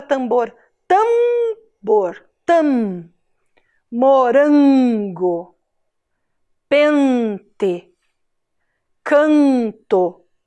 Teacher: em final de sílaba então vogal a vogal e vogal o todas essas vogais mais a letra m ou a letra N vão dar esse som Hum que sai pelo nariz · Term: som nasal